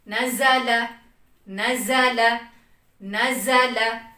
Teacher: इसमें वाइब्रेट भी नहीं हो रही, थोड़ी सी सख्ती, थोड़ी सी वाइब्रेशन और सीटी की साउंड